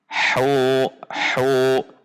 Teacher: di tengah tenggorokan makhrajnya sama dengan huruf ain. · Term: huruf ha